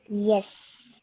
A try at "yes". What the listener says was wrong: It's not s. It's yes. So you'll keep saying yes, ma'am, not s, ma'am.